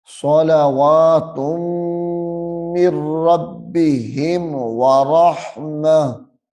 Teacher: اظہار کر کے پڑھیں گے، یعنی میم کو ظاہر کر کے پڑھنا ہے